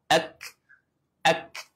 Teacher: Ha syiddah ni maksudnya dia tertahan. Ha dia mesti kena tertahan dulu pada k tu